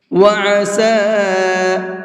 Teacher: اس چھوٹے مد کو 1 سے 3 الف کے برابر کھینچ کر کے پڑھیں گے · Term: چھوٹا مد